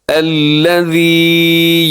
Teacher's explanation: ہے، تھوڑا سا لمبا بھی کرنا ہے کیونکہ یا مدہ ہے، یا ساکن اس سے پہلے زیر تو یا مدہ ہوتی ہے، تھوڑا سا کھینچ کے لمبا کر کے پڑھا جاتا ہے۔